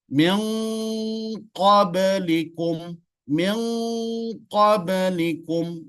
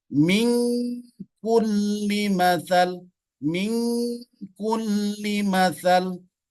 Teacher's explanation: Jadi ujung lidah nun menyentuh bagian atas langit-langit, di atas sedikit bagian gusi, bertemu dengan huruf yang berada di pangkal lidah, yaitu qaf dengan kaf. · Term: huruf eng